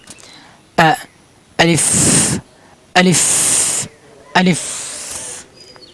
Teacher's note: হলকে শুরু, এই দেখেন স্থানে দেওয়া আছে এই যে হামজা হরফ, হলকে শুরু হইতে হামজা হা আলিফ পড়তে হয়। হলকে শুরু থেকে গলা খুলে উচ্চারণ করবেন আলিফ হরফ। আলিফ আলিফ প্রথমে একটু শক্ত করে আলিফ আলিফ ফার মতন করে বাতাস বের করবেন।